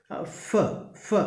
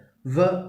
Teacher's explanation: ലാബിയോ dental sounds are produced with the lower lip is the active articulator and the upper front teeth is the passive articulator